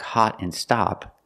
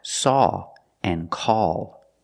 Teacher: they don't make the short ah like hot and stop they make the sound all like saw and call the sound is a little different it's not the open ah